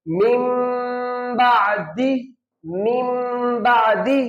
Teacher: یہاں پہ میم کی آواز آئے گی، یہاں پہ نون کی آواز نہیں آئے گی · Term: اقلاب